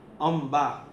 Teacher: કારણ કે બિંદીનું ઉચ્ચારણ મ થાય થાય છે ડિપેન્ડ ઓન સેકન્ડ આલ્ફાબેટ એટલા માટે આખી ઉચ્ચારણ પદ્ધતિ